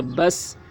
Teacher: یہاں پر قلقلہ نہیں ہوگا سین میں کیونکہ سین حروف قلقلہ میں سے نہیں ہے۔ سین کے اوپر جزم تو ہے لیکن سین حروف قلقلہ میں سے نہیں ہے، اس وجہ سے یہاں پر قلقلہ نہیں ہوگا۔